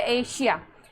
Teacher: एशिया में तालव्य श पढ़ रहे हैं।